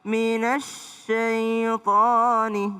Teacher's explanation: Nempel dari na ke s minasyaitani. Jangan minasai tapi minasyaitanirrajim.